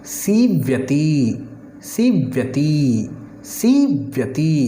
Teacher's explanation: सी का उच्चारण लंबा होगा और ती का उच्चारण छोटा होगा।